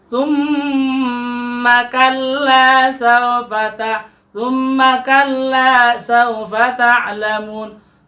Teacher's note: Tsumma kalla sawfa ta'lamun. Tsumma, pada huruf mim ada tasdidnya, maka kita akan baca dengung dan juga kita baca sepanjang 2 harokat.